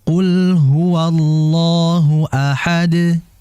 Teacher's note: Adapun kalau berhenti, ya dibaca qalqalah huruf dalnya.